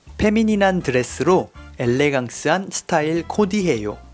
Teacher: a typical case where F sound is replaced to P sound